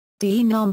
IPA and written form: dɐ.ˈnom (danum)